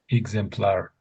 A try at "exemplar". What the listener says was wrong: When you read it out, that was exactly it. When you read it out, but it's more exemplar. Exemplar, I should say. Not, the R is a bit dead, I would say. So exemplar. Exemplar. Some people pronounce the R a little bit more than others.